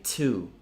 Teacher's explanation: Aspirated con tanta aria che esce. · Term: aspirated stops